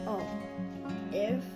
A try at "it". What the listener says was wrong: No. It's a T.